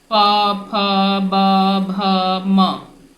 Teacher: अब इसके बाद आता है ओठ, प फ ब भ म। इसमें देखिए दोनों ओठ आपस में सट रहे हैं।